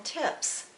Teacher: the sound is unvoiced the vocal cords are not vibrating as they do when making the sound z